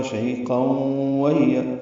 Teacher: ہی یا مدہ ہے، 2 حرکات لمبا کریں گے. قاف پر پڑھیں گے اور تنوین کے بعد واو آنے کی وجہ سے ادغام ہے، غنہ ہوگا. · قاف پر پڑھیں گے اور تنوین کے بعد واو آنے کی وجہ سے ادغام ہے، غنہ ہوگا. شہیقا وہی، واو کو ہونٹوں کی نا تمام گلائی سے ادا کریں گے